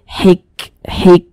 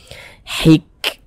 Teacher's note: sifat Hames nah sehingga ada nafas yang mengalir ketika Kita mengucapkannya